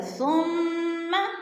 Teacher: ثم کی میم مشدد ہے، غنہ کریں گے، سختی سے جمع کر پڑھیں گے، اور ثم کو لمبا نہیں کرنا کیونکہ ثم کے اوپر زبر ہے، اگر زبر کو لمبا کریں گے کھینچیں گے تو پھر لفظ مجہول ہو جائے گا۔